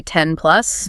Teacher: the final sound in 10 is n made with the tongue behind the teeth.